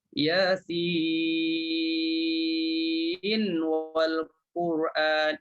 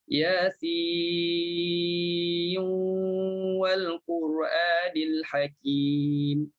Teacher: Kalau baca Warash, lidah tak perlu pergi letak pada makhraj nun. Tak perlu. Yasin, cukup 6, terus muncung bibir mulut. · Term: idgham